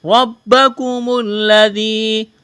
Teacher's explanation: را کے اوپر زبر ہے، را کو موٹا پڑھیں گے، با کے ساتھ لس کریں گے۔